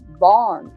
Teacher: even Swedish and Norwegian, they have this retroflex sound, and it sounds like American R